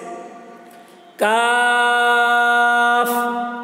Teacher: काफ, देखिए ये वाली काफ को भी ज्यादा खींचेंगे लेकिन इसकी आवाज पतली होती है, काफ आखिर में हवा निकल रही है